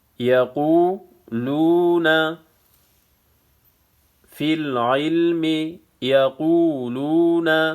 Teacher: واو مدہ ہے، ایک الف کی مقدار کھینچنا ہے